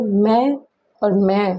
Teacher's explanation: ध्वनि मुख के साथ नासिका से भी निकलती है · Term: अनुनासिक स्वर